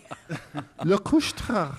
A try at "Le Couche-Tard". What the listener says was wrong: You need a little more phlegm.